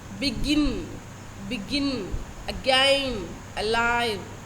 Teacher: you find the first syllable to be unstressed the second to be stressed and that way one unstressed syllable followed by one stressed syllable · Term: i am